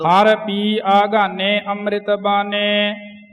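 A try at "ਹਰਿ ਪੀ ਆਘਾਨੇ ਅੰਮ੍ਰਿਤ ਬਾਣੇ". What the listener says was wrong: ਹਰ ਪੀ ਆਗਾਨੇ ਅੰਮ੍ਰਿਤ ਬਾਣੇ, ਬਾਨੇ ਨਹੀਂ ਬੋਲਣਾ, ਬਾਣੇ, ਜਿਵੇਂ ਸਿੰਘ ਜੀ ਨੇ ਉਚਾਰਨ ਕੀਤਾ ਹੈ।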